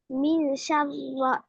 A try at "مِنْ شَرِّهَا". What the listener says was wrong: من شرها নয়ের নিচে জের হবে।